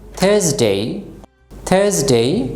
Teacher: আর এর পরে কি আছে কনসোনেন্ট, এই জন্য আমরা আর কে উচ্চারণ করব না।